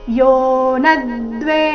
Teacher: ನ ಮೇಲೆ ಆಘಾತ ದ್ವೇ ಮೇಲೆ ಕೂಡ ಆಘಾತ ಬರಬೇಕು ದ್ವೇ ದೀರ್ಘ ಬಂದು ಮುಂದೆ ಆಘಾತ ಯೋನದ್ವೇ ಕಾಂಕ್ಷತಿ ಕಾಂಕ್ಷತಿ ನಿರ್ವಂದ್ವೋ ನಿ ಆದ